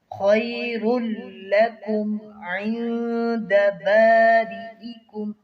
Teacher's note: خا کو موٹا کریں گے، حروف مستعلیہ میں سے ہے